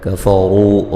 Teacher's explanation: قل الذین قاف کو موٹا ادا کریں گے، ذی مدہ ہے، کفروا را کو موٹا ادا کریں گے ، اور یہ جو مد ہو رہی ہے یہ مد جائز